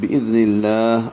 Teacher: لام اسم جلالہ کو باریک پڑھنا ہے